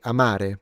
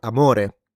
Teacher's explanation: I'm putting the stress on the second syllable. And what that does is that basically what I'm doing, I am lengthening the the duration of that vowel when I put the stress.